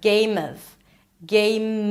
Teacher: Then you move on to a reduced word and that is the word of. So, actually you want to connect those two together. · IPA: ˈgeɪm əv